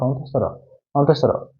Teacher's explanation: জিহ্বাটা মানে তোমার জিহ্বাটা কাঁপতেছে, তোমার কন্ট্রোনালটা কাঁপতেছে, এই জন্য এটাকে আমরা বলবো হচ্ছে কম্পনজাত ধ্বনি।